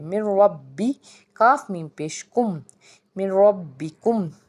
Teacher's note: जब मीम को रॉ से मिलाएंगे बग़ैर गुन्ना के इसको अदा करेंगे, इसको हम कहते हैं इदगाम ताम।